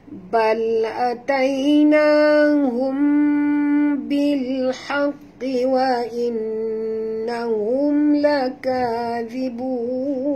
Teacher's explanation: Tapi kalau ikhfa syafawi ni ialah mim mati, bukan nun mati ya. Mim yang mati bertemu dengan satu saja hurufnya, iaitu huruf ba ya, jadi dengung dua harakat ya.